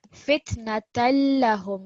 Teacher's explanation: Fitnatallahum. Not la, so don't make this la too long. Fitnatan lahum, because this la, remember, it's just got a fatha stroke.